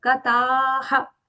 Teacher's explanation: Here ta is long. After that there is a visarga.